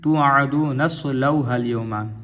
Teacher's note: یہ حمزہ وصلی ہے، ملا کے پڑھیں گے